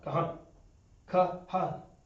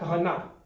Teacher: You don't announce the A because it's at the end of the word.